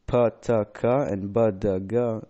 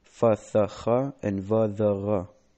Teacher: The phenomenon called begat kefat or begat kefet changed all the regular ungeminative plosives into fricatives after a vowel